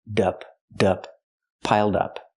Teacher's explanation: Connect the d with the next word.